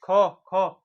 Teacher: ख ख कंठ से बोलते हैं